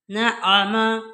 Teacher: نون کے اوپر شد ہے، یہاں ہم غنہ کریں گے